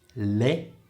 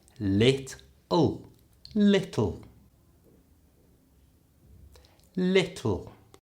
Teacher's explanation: That's a long L at the start, li, and then at the end it's ul.